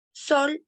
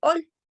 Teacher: omite las consonantes iniciales. Por ejemplo, en vez de decir sol, dice ol. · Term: omisión de consonantes iniciales